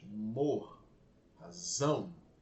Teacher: Mor e zão são sílabas bem fortes.